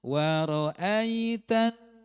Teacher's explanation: nggak bisa keluar karena dia harus keluar dari rongga hidung ya pastikan memang keluar dari rongga hidung dan ditahan dengung 2 haroket